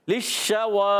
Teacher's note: शीन अदा होता है वस्ते जबान वस्ते तालु जबान के दरमियान और ऊपर तालु के दरमियान से